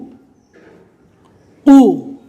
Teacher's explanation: قوف کو حلق سے اچھی طرح ادا کرنا ہے